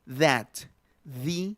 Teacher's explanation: Es interdental, se le llama interdental entre los dos dientes. · Fricativo quiere decir que deja pasar un poquito el aire